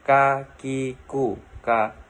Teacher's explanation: Melafalkan huruf ko dengan menyentuhkan pangkal lisan dengan langit-langit bagian belakang.